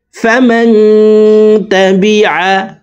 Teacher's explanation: আইনকে হলকের মধ্যখান থেকে উচ্চারণ করব, কারণ আইনের মাখরাজ হলকের মধ্যখান থেকে হবে।